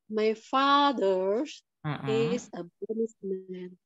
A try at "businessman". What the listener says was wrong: Man itu bacanya pakai E. Businessman. Businessman. Pakai E. Businessman.